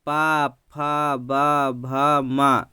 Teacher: इसको बोलने में हमारे जो दोनों ओठ हैं आपस में स्पर्श होते हैं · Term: ओष्ठ व्यंजन